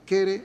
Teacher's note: Y no hay diptongo o no se representa en quere, por quiere, un rasgo que todavía hoy se percibe en variantes mexicanas, se escucha mucho en ciertos corridos mexicanos también, quere en lugar de quiere.